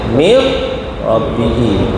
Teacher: Nun bertemu dengan ra idgham bila gunna. Yang tu tak dengung. Masukkan tanpa dengung. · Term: idgham bila gunnah